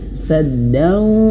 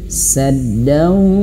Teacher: Lebih tepatnya saddau masuk ke hidung. Ya. Jadi ciri di antara masuk hidung itu adalah kalau hidungnya ditutup ada perubahan suara. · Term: idgham bighunah